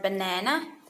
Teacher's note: the stress is on the middle syllables of word